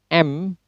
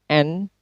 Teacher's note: as the velum is lowered, the air can escape through the nasal cavity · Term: Nasals